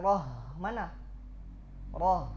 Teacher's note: aljahru maknanya apa inhibasun nafas ya inhibasun nafas tertahannya na nafas ketika kita mengucapkan ro tidak mengalir nafas